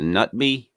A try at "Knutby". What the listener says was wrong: I listened to some actually Swedish people talking about the case, and they called it Knutby. I'm sorry, Knutby. They pronounced the K.